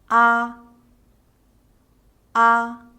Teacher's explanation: The mouth is wide open. A. The tongue is at its lowest and the lips are unrounded.